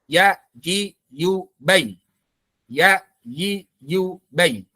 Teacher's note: Ya, pangkal lidahnya turun. Ya, nggak terangkat pangkal lidahnya. Biasa aja kayak huruf ya pada umumnya. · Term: istifal